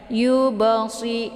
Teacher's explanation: ada ba sukun di sini yang terdapat di pertengahan kalimat. Maka ba ini dinamakan dengan qalqalaf ya. Ada pantulan suara be-nya ya. Yubasi, namun di sini adalah pantulan ringan karena huruf qalqalafnya terdapat di pertengahan kalimat ya.